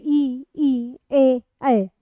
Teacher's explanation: अग्रस्वर 4 होते हैं। आपकी जिह्वा है उस जिह्वा का अग्रभाग सक्रिय होगा